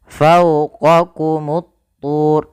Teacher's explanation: Kita namakan alif lamnya alif lam syamsiyah, yaitu alif lam yang kita tuliskan tapi lamnya tidak dibaca, sehingga huruf lamnya diidghamkan ke huruf ta, sehingga ta-nya berharakat tasydid.